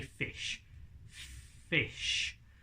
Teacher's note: So our lips, our teeth, meet our lower lip, and sound passes through between our teeth and our lips. So what we've got to do is replicate that without touching our bottom lip.